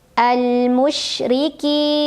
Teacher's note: Ra-nya dibunyikan secara tarqiq karena ra berbaris dan barisnya di bawah kasrah, maka bacanya tipis.